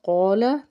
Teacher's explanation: قاف جو ہے حرف مستعلیہ کا حرف، اس کو پر پڑھنا ہے، الف سے پیچھے زبر ایک الف کے برابر کھینچ کے ادا کرنا ہے۔